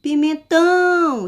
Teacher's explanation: eu tive uma extensão, uma força ao pronunciar a sílaba tão. Então, essa palavra, a sílaba mais forte dela é a sílaba tão, que é a sílaba tônica.